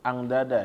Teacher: bertemu dengan huruf mana nih di huruf Dal Ang Dada ya maka dengungnya ini atau gunahnya keluarnya fokusnya dari mulut jangan dari hidung jangan Ang nah ini dari hidung tapi dikeluarin dari mulut jadi